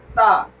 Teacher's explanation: ता THA हमने इस वजह से लिखा है क्योंकि इसको अदा करने में ता की आवाज आती है। 70 से 80% आवाज ता की आती है, बाकी 20% उसमें सा की आवाज आती है